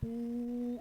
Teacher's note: para pronunciar la U, la lengua tiene que irse hacia atrás, porque la U es velar